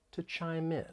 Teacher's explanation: just want to point out that more linking may occur and we can link the final consonant sound in chime with the vowel sound in in